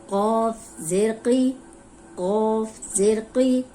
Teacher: اب یہ قاف موٹا ہے اور زیر کے ساتھ موٹا ہی ہوگا